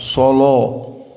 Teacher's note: lamnya itu dibaca dengan kental, taghlidz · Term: lam mughalladah